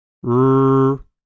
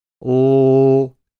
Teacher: First, look at the position of the tip of the tongue. For the r sound, the tip of the tongue is raised toward the alveolar ridge, but it doesn't touch it. For the ol sound, the tip of the tongue touches the alveolar ridge, behind your upper front teeth.